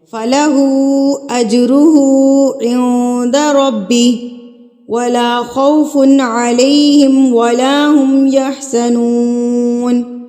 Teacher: مد منفصل کو میں نے یہاں پر 3 حرکات کے برابر کھینچا ہے